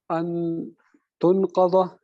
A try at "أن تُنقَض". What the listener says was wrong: یہ آپ نے مجہول پڑھا ہے. تن قضا کھولی جائیں. خاف کے اوپر زبر پڑھنا ہے.